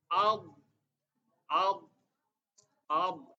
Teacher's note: keluar dari sisi lidah menempel pada gigi geraham atas